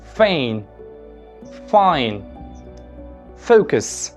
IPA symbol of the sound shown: f